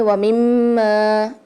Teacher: میم کے اوپر تشدید آ رہی ہے، مشدد آ رہی ہے تو یہاں پر لازمی غنہ ہوگا، اور ویسے بھی میم کے اندر غنے کی ہمز پائی جاتی ہے تو یہاں پر ہم لازمی غنہ کرتے ہیں میم پر۔